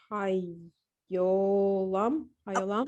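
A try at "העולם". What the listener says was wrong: Okay, no, there's no There's no yeah here at all. So it's ha, o, All right, the silent is silent. It's not yeah, it's just silent. Ha, o, lam.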